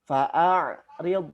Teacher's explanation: Hamzah ini keluarnya dari tenggorokan bagian bawah, kemudian ain keluar dari tenggorokan bagian tengah. Dari bawah kemudian naik ke tengah, gitu ya.